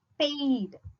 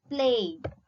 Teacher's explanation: a glide from a front unrounded vowel between half close and half open to a front unrounded vowel between close and half close. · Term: diphthong